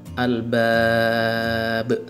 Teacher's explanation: karena ba terakhir diwakafkan maka qalqalah kubra